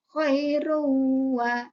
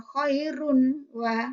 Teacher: Nah, bagaimana idgham bihunah dinamakan idgham bihunah jika ada nun sukun atau mati bertemu dengan huruf mim, nun, wawu, ya. Maka bunyi en dimasukkan atau dilebur ke huruf berikutnya dengan mendengung.